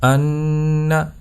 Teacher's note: یحسب ان، تو ان یہاں پر نون کے اوپر آپ نے غنہ کرنا ہے، یعنی نون کی آواز کو آپ نے ناک میں لے جانا ہے، تھوڑی دیر سختی کے ساتھ اس کو ناک میں رکھنا ہے